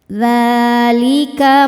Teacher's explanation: Sebab huruf dal berharakat fathah panjang. Cara membaca huruf dalnya ini adalah dipanjangkan dua harakat. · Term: mad thobi'i muqaddar